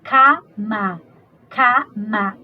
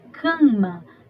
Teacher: Então, esse esse A do K, desse K-A, esse A está assumindo um traço nasal do M, do seu vizinho, tá? Mesmo que estejam em sílabas diferentes, na hora da pronúncia, esse A vai assumir esse traço nasal do vizinho, tá?